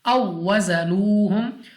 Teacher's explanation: वाव साकिन से पहले ज़बर वाव लीन, बगैर खींचे बगैर झटका दिए मारूफ पढ़ेंगे